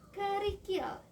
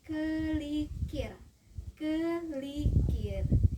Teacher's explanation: metatesis, yaitu perubahan atau pertukaran huruf di dalam satu kata, seperti kata kerikil.